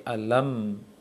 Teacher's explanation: Syiddah sedikit, rakhawah juga ada. Dan istifal dan infitah, idlaq dia, dan jangan ada qalqalah pada mim.